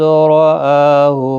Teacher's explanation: حمزہ کے اوپر کھڑا زبر ہے، ایک الف کی مقدار کے برابر کھینچ کر پڑھیں گے